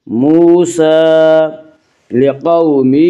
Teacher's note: قاف کو پر پڑھیں گے، قاف حروف مستعلیہ میں سے ہے